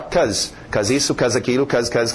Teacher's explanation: em pronúncia rápida nós vamos ver o be sumir